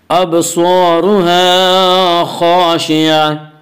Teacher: گول تا پر وقف کرنا ہو تو گول تا وقف کی صورت میں ہائے ساکنہ بن جاتی ہے